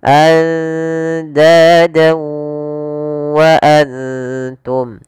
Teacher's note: masukkan fathatainnya ke huruf waw dan ditahan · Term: idgham bi gunnah